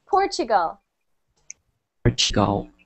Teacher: it's not a t but a CH